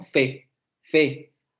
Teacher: Hay distensión de labios, es decir, no se labializa ni nada. Los labios se distienden como en fe, ¿no?